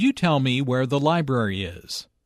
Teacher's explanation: Notice that library is stressed here because it is the word with the important information.